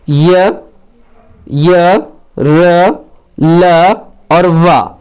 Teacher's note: चारों वर्ण य, र, ल, व सघोष हैं और अल्प प्राण हैं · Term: अंतस्थ व्यंजन